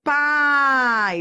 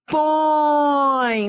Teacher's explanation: Ou seja, vai da vogal para a semivogal. Vai da vogal, que é o som forte, para o som fraco da semivogal. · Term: Ditongo decrescente